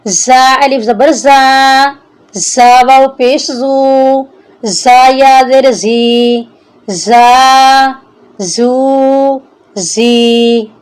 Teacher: زا کو ہم سختی سے پڑھیں گے تاکہ ہلکی سی سیٹی کی آواز آئے۔ زا سیٹی والا حرف ہے۔